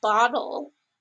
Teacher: words a l is oftentimes actually used as a vowel so when we say words like bottle you don't actually say a vowel right before that L